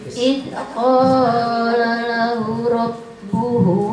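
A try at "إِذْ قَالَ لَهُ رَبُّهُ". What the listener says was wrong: Panjang hu-nya. Id qala lahu hu panjang.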